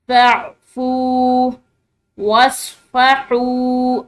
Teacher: فا کے بعد واو ساکن ہے تو اس کو لمبا پڑھیں گے